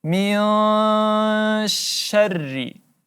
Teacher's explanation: Nun mati bertemu huruf shin, ya, ikhfa hakiki, maka kita dengungkan 3 sampai 4 harakat.